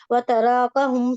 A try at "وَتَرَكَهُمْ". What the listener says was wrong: تراکوں کو لمبا نہیں کرنا، تراکا، ٹھیک ہے، تراکا نہیں ہے،